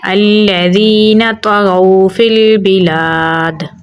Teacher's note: دال پہ قلقلہ کریں گے۔ آیت لگانے کی صورت میں دال کی زیر کو ساکن کر دیں گے تو پڑھا جائے گا الذین طغوا فی البلاد۔